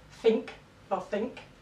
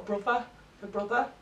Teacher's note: th fronting so this is where you get a sound um where you would have th in the spelling being pronounced as a f or V